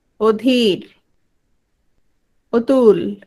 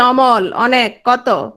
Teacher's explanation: অকে যখন ও বলছি তখন সেটা হচ্ছে সংবৃত যখন নরমাল বলছি তখন সেটা হচ্ছে বিবৃত